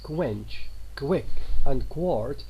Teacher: Labializing a consonant causes it to take on a W-like quality, that is O-like quality. The words quench, quick, and quart all begin with K's, which are labialized.